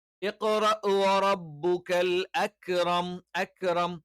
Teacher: അണ്ണാക്കിന്റെ കുറച്ചുകൂടി ഉറപ്പുള്ള കഠിനമായ ഭാഗത്ത് വെച്ചുകൊണ്ടാണ് നമ്മൾ എന്ത് ചെയ്യുക? ക ഉച്ചരിക്കുക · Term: കാഫിന്റെ മഖറജ്